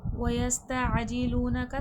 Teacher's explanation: سین حرف صفیر ہے، سختی سیٹھی کے ساتھ، عین کا مخرج سے واضح کریے گا، عین اور حمزہ میں فرق کریے گا۔